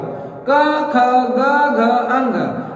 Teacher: ये सारे उच्चारण करते समय जो हवा है, जो प्रेशर है, वो कंठ पर आता है। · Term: कंठ्य